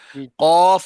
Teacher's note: जबान की जड़ जब कौवे के करीब से नरम तालू से लगे तो उससे कौफ अदा होता है यानी कौफ काफ ऊपर है और काफ जरा नीचे।